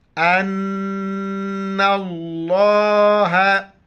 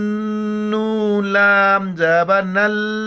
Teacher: لفظ اللہ سے پہلے ان کے اوپر زبر، لفظ اللہ کو موٹا پڑھیں گے اور نون کے اوپر جو ہے نا شد نون پر غنہ کریں گے